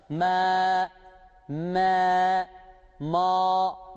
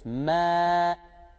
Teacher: Ama bunu E-A arası bir ses okuyoruz.